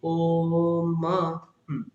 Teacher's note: ওকারটাকে আরো টানতে হবে